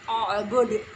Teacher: huruf dal yang harus dibaca dengan memantul. Karena di sini adalah dal, di sini adalah bacaan daripada qalqalah kubra.